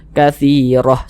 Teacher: huruf ro ini ada tanda baca fathah huruf ro dibaca tebal kaattiroh sehingga pangkalisan kita naik terangkat ke atas naik terangkat ke